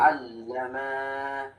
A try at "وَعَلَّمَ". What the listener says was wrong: এই যে দেখো ও আল্লামা একটু দাঁড়াও ও আল্লামা এই যে মিমটা এই মিমটা টান হচ্ছে এই মিমটা টানা যাবে না ও আল্লামা আদামাল আসমা শেষ এই পর্যন্ত বলো